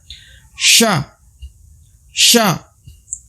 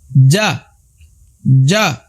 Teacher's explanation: huruf yang timbul apabila pertemuan antara lidah bagian tengah dan juga langit-langit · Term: tengah lidah